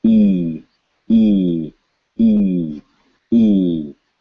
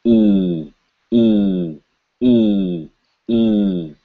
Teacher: So the first one should have no vibration, E. Second one, vibration, E.